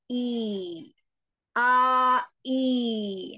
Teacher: Ketika dia berpasangan dengan ya, i-nya jadi panjang, maka al-jaufnya atau makhrajnya, al-jaufnya, rongga mulutnya itu bagian rahang terbuka ke bawah.